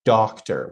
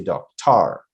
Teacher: Now, the first syllable is stressed. The second syllable is not. We pronounce it without putting a stress or putting a little bit of, we don't pronounce it strongly.